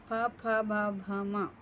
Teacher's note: వీటిని ఓష్ట్యాలు అంటారు అంటే పెదవుల సహాయంతో పుట్టేవి